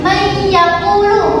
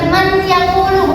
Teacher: nunnya itu tidak dibaca atau tidak dijelas gitu, tetapi dengung. Jadinya maka may yaqulu, bukan man yaqulu, bukan jelas gitu. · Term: idgham bi gunnah